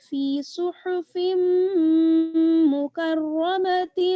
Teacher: تو اگر آپ ملا کے پڑھیں گی تو پھر آپ اس طرح سے پڑھیں گی، فی صحف مکرمۃ، تا کو میم کے ساتھ آپ ملا دیں گی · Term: ادغام